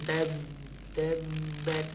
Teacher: Sifat pertama jahar, tidak berdesis dia suaranya. Sifat kedua syiddah, nggak boleh jalan suaranya.